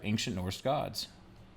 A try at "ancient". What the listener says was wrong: Did you say ancient? Ancient. There's no K in it.